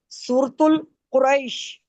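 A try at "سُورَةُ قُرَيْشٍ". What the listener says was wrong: सूरतुल नहीं, सूरतु। सूरतु। तुल। तुल। पहले मेरी सुना भी तो करें, तुल नहीं ये तू है, सूरतु कुरैशिम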